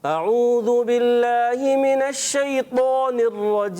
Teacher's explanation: ذال کو آپ نے زا نہیں پڑھنا